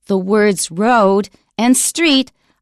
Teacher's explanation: Both W and R in English are pronounced with lip rounding.